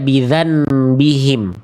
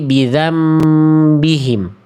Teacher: Bukan dibaca bidzanhim tapi bidzambihim. Udah enggak ada n-nya tapi masuk dibalik ke em · Nah, misalnya di Quran surah Asy-Syams ayat ke-14. Jangan sampai bunyi nunnya yang dibaca tapi udah dibalik ke huruf mimnya, bukan dibaca bidzan bihim, tapi bidzam bihim. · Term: iqlab